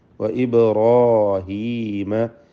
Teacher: റായിനും അലിഫിനും തഫ്ഖീം കൊടുക്കുക